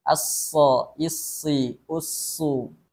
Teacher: sifat shad juga ada sifat tambahan yakninya adalah sofir, artinya berdesis. So, ada desisan ketika kita membacakan huruf shad ini.